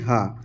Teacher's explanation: हा हमारी जो है वो कंठ ध्वनि हो जाएगी। और इसको जो है काकल्य व्यंजन भी कहा जाता है। हा वर्ण जो है ये जो है इसको काकल्य व्यंजन भी कहा जाता है।